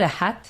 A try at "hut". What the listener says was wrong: H-U-T. It's a hut, not a hat.